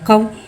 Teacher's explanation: वावलिन को बगैर खींचे बगैर झटका दे नरमी से मारूफ पढ़ेंगे